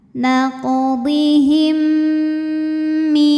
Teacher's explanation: Maka cara bacanya mim yang sukun dileburkan ke mim kedua disertai bunyi dengung. Jadi di sini ada bunyi m yang ditahan. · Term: idgham mimi